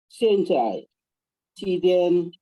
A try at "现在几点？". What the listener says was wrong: Oh, nadanya Pak, 几点? Ya, 几点 ya, 3, nada 3 ya.